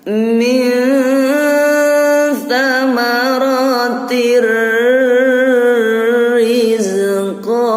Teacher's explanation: Jadi kasroh tanwinnya langsung masuk ke ro. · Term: idgham bilahunna